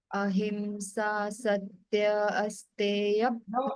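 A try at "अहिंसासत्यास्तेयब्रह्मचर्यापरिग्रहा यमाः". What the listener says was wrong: No, wait. Not asteya. Wait. We are chanting sutra. We cannot break it.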